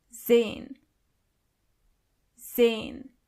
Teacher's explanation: the letter S is not pronounced as S, but more like Z.